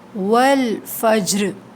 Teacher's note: جیم پہ قلقلہ ہوگا، آواز پلٹ کر آئے گی نرمی کے ساتھ